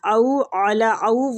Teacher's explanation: او وہ لین ہو رہا ہے تھوڑا سا کھینچیں گے